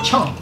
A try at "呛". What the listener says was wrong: 呛 ， 这 发 音 不 对 了 ， 有 点 啊 。 嗯 ， 这 音 调 不 对 。 这 音 调 不 对 呀 ， 看 看 这 汤 怎 么 样 ？